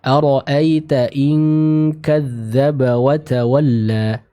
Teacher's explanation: ikhfa bertemu dengan huruf kaf, maka sempurnakan dengungnya dibaca dengan ng, dengan eng ya